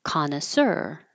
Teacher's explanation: we're keeping the stress in the last syllable